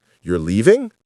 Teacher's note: Question. Voice up. Surprised. Want confirmation.